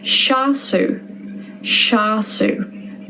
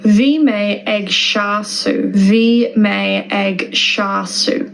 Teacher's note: S, when combined with E or I in Irish, makes a sh sound.